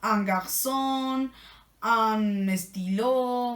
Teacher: El primero es completamente nasal, como si tuviéramos tapado.